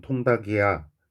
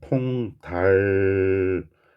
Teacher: 역시나 모음으로 시작하는 형식 형태소입니다. 그러면 받침 두 개, 겹받침, 리을 기억 중에 기억만 뒤로 넘겨야 되죠. 그래서 정확한 발음은 통달기야 겠네요. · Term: 연음